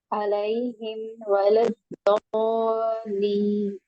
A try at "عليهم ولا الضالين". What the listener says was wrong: count کریں نا آپ تو صرف 3 بھی بہت مشکل سے آپ کے 3 بھی نہیں میں کہوں گی آپ اپنی انگلیوں پہ کاؤنٹ کریں اور شے پڑھیں انگلیوں پہ کاؤنٹ کریں اس کو بھی آگے بھی پھر جو ہے لین بھی لمبا ہوتا کیوں آگے 2